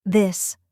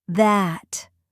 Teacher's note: for this, touch your tongue to your teeth and voice the sound slightly. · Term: th sound